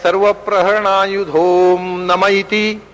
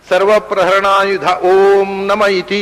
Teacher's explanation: ವಿಸರ್ಗವನ್ನು ತೆಗೆದು ಆ ವಿಸರ್ಗದ ಸ್ಥಾನದಲ್ಲಿ ಓಕಾರ ಹಾಕಿ ಅದನ್ನು ಸಮಸ್ತವಾಗಿ ಹೇಳಬೇಕು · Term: ಸಂಧಿ